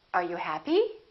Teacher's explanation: with yes no questions the intonation goes up